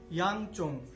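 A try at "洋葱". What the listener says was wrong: এটা চোং নয়, এটা হলো সোং।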